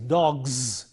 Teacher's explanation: It is not s, it is not dogs, but it is dogs. The voicing should be there.